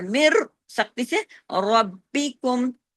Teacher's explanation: ادغام تام بلا غنہ، بالکل کوئی غنہ غنہ نہیں ہے اس کے اندر